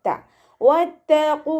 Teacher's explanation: ത ലൈറ്റാക്കിയിട്ട് ഉച്ചരിക്കുക. മഖ്റജ് വരുന്നത് നമ്മുടെ നാവിൻ്റെ അറ്റവും മേലെ മുൻപല്ലിൻ്റെ മുരടും ചേർന്നിട്ടാണ്